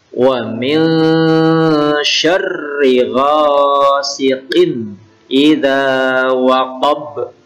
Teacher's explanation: qalqalah kubra, memantul karena di akhir